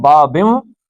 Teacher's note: نون کے بعد بے آ گئی ہے تو یہ میم پڑھا جائے گا، نون نہیں پڑھا جائے گا